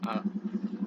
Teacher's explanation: rongga mulut itu terbuka lebar dan lidah itu dalam keadaan jauh dari langit-langit. Kemudian close mughlaqah itu hanya untuk vokal I dan U, itu tergolong sebagai bunyi vokal yang tertutup karena lidah dalam keadaan mendekat ke arah langit-langit sehingga rongga mulut tertutup atau sempit. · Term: open al-maftuh